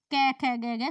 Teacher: क वर्ग का हम उच्चारण कहां से करते हैं कंठ से क ख ग ग सभी कंठ से बोलते हैं से कंठ